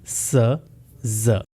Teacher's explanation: Tip of the tongue lower teeth को touch करेगा and the blade of tongue comes near alveolar. और blade of the tongue जो कि आपके टिप के बिल्कुल पीछे है वो रेस होके एल्वियोलर रिज की तरफ जाएगा।